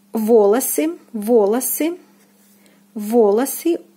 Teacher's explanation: The first O is stressed and the second unstressed and is pronounced as A